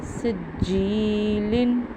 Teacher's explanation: یہاں پہ جیم کے نیچے زیر تھی، یا ساکن کیا ہے، آگے جزم تھی، اس لیے ہم نے اس کو ایک الف کے برابر لمبا کیا